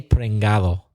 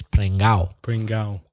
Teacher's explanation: No one pronounces the D ever in that word. I've never heard a Spanish person ever say prengado.